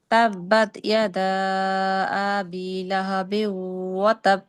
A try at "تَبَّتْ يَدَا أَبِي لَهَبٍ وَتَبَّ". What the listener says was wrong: আপুর হামজাতে টান হয়ে যায়, আবি এখানে হামজাতে টান হবে না, আবি বায়ে টান হবে শুধুমাত্র।